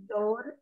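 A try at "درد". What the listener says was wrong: दौर नहीं देखिए, दाल रे दबर, दाल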